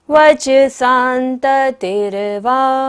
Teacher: स के ऊपर बिंदी है और बाद में क्या है? तो बिंदी का उच्चारण क्या होगा? न, अनंत की तरह, शांत की तरह।